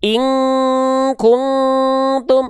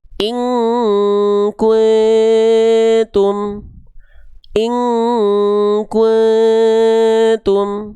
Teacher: nun sukun ketemu huruf ta, dia menjauhi eng alias dengungannya lemah. Maka ketika dibaca jangan sama semuanya eng.